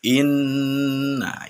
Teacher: itu di situ ada Nun bertasydid nah ini dinamakan bacaan ghunnah cara membacanya yaitu dengan ditahan sebanyak 2 harokat kemudian sampai dengan terasa dalam hidung